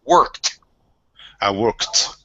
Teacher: when the verb ends with a voiceless sound, the ed d is pronounced as a t.